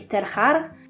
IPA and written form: telxar (Telchar)